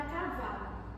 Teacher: Exemplo, na palavra cavalo, a vogal A da palavra K é uma vogal pretônica oral, pois é uma vogal antes da sílaba tônica vá. Esse A ele é pronunciado de forma mais suave e sem se acentuar.